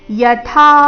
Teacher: ಯಥಾ ಥ ಮಹಾಪ್ರಾಣ ದೀರ್ಘ